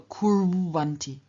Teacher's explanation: the u changes into its semi-vowel equivalent w in front of another vowel